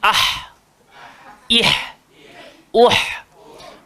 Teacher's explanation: So ha keluar dekat tengah-tengah tekak halqum ni. Sebab tu kita bunyi ah.